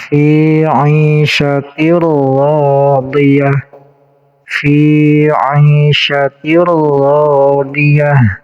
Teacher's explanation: Kemudian di sini ada tanwin menghadapi ro, namanya idgham bila guna. Jadi dimasukkan langsung ke huruf idghamnya. Tanwinnya dihilangkan. · tanwinnya dihilangkan, langsung masuk ke huruf ro, namanya idgham bila guna. Ro panjang 2 harokat karena menjadi mad tabi'i.